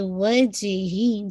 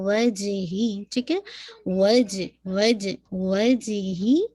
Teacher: جیم پہ حلقہ لائے لیکن بہت لائٹ ہوگا